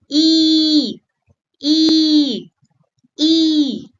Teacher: And for E, it has long sound. You have to stretch it like saying e and you have to hold for two beats.